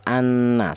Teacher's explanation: Cara bacanya nun yang pertama ini langsung menyatu ke huruf yang nomor dua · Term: idgham